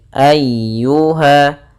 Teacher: Nah, di sini ada huruf ya yang berharokat tasydid. Ya termasuk huruf lembut dan dia harus ditekan karena dia tasydid.